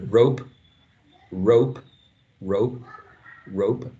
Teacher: it's a controlled uh flow of air which is blocked but there's no plosion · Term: unreleased plosive sound